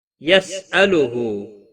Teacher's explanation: سین ساکن کو ہلانا نہیں، ہا کے اوپر الٹا پیش ہے، ایک الف کے برابر کھینچ کر پڑھیں گے